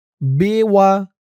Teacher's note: ওকফ করার কারণে জেরের পরে ইয়া সাকিনে এক আলিফ টানটা ৩ আলিফ হয়ে গেছে